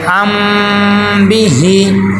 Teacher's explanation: با آ گئی ہے، تو اس کو بولتے ہیں اخفاء شفوی، کہ میم کی آواز کو ہم ناک میں پڑھیں گے